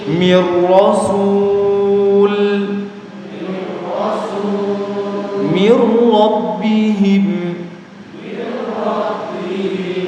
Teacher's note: nun sukun atau tanwin ketika bertemu dengan huruf ro ya sama cara bacanya dimasukkan tanpa disertai mendengung